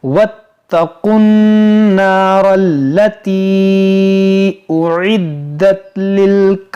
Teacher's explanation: ये क़ाफ को नून से मिलाएंगे